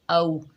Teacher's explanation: आगे वाव साकिन है, ये वाव लीन है, नरमी और जल्दी से अदा करेंगे।